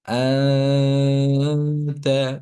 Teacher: ইকফা এর গুন্নার আওয়াজটা কেমন হয়? বাংলায় চন্দ্রবিন্দু বা অনুস্বরের মতো। আনতা, তালুর সঙ্গে জিহ্বা লেগে যাবে না। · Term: গুন্নাহ